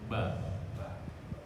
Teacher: Syafatani itu yang keluarnya di antara dua bibir. Ba itu keluar dari antara dua bibir, tapi diawali dengan bibir posisinya mingkem dulu, menutup dulu. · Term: huruf syafatani